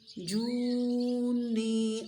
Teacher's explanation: کیونکہ غنہ ہو رہا ہے یہاں پر، کیونکہ نون مشدد ہے. نون یا زر نی کو تھوڑا سا لمبا کرنا ہے، کیوں؟ کیونکہ یہ مد اصلی ہے